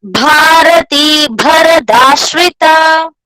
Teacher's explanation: Saubhagya rasa jivatus सौभाग्य रस जीवातुस सारा सार विवेक दृक् त्रिवल्यादिषु पुष्टांगा भारती भरताश्रिता. both bhas are mahapranas.